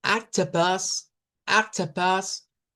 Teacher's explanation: suenan como una A media, como una A abierta hacia atrás, open back A.